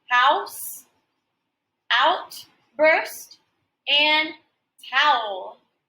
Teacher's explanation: the o u contains two sounds and these sounds are examples of diphthongs